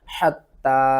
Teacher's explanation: یہاں پر دیکھیں بہت سے لوگ اس کو پڑھتے ہیں حتی اذا دارکو، تو اس کو صحیح پڑھنے کا طریقہ کیا ہے، سب سے پہلے اس کے ہجے شروع کرتے ہیں، حا تا زبر حتی، مد کھڑا زبر تا، حتی۔ یہاں پر تا کو ہم نے 2 بار پڑھنا ہے اور تا کے اوپر سختی کرنی ہے اور تا کو ایک الف کے برابر کھینچ کر بھی پڑھنا ہے۔ حا کو آپ نے حلق کے درمیان والے حصے سے ادا کرنا ہے، حتی، حمزہ زیر ای، ذال دال زبر زد۔